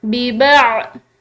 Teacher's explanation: عین حروف حلقی میں سے ہے، ٹھیک ہے، اس کو حلق سے ادا کیا جاتا ہے